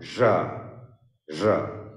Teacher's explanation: This sound isn't available in Bangla. It's a palato-alveolar sound.